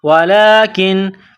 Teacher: کاف کو نون کے ساتھ ملانا ہے. نون ساکن کے بعد کاف ہے حروف اخفا ہے تو یہاں غنہ کریں گے آواز ناک میں چھپائیں گے. واو زبر وا لام کڑا زبر لا ولا کاف نون زیر کن ولكن کاف الف زبر کا ولكن کا نون واو پیش نو یہاں مد ہے اس کو تھوڑا کھینچنا ہے.